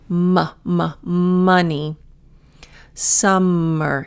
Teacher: Your top lip and your bottom lip make contact. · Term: the M